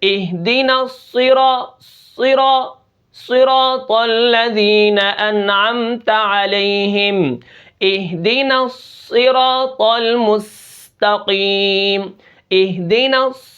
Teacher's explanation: صاد موٹا بھی ہے، اس کی آواز بھاری بھی ہوتی ہے۔